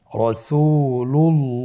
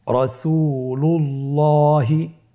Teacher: আল্লাহ শব্দের দ্বিতীয় লামের আগেই এখানে একটি পেশ রয়েছে, এই জন্যে দ্বিতীয় লামটিকে পোর করে পড়তে হবে